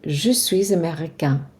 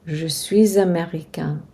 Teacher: We make a liaison between suis and américain. So the S gets pronounced because it's followed by a vowel.